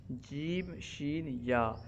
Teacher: وہ حروف جو زبان کے درمیان اور تالو کے درمیان سے ادا ہوتے ہیں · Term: حروف شجریہ